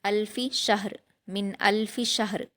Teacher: من الفی شہر، شین پر حرکت جلد پڑھیں گے، ہا پر جزم ہے، شین کو ہا سے ملا کر جلد پڑھیں گے اور معروف پڑھیں گے، اور شین کو ہا سے ملا کر جب پڑھیں گے ہم تو قلقلہ نہیں کرنا، ہا ساکن پر قلقلہ نہیں کرنا، اور را کی جو 2 زیر کی تنوین ہے وہ وقف کرتے ہوئے جزم میں بدل جائے گی۔